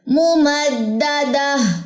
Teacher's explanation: ممدہ نہیں کرنا. دال کی زبر کو لمبا نہیں کرنا